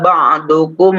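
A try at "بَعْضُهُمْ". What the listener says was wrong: Baik, ba'duhum bukan kum ya. Ila ba'dhin itu kan ikhfa ya. Itu ikhfa, ditahan 2 harokat.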